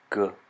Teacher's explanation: This sound is a voiced velar plosive. It always makes the g sound, not the j sound that a G in English sometimes makes.